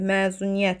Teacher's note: Vurğu sonuncu hecadadır. Bəli, məzuniyyət sona düşür.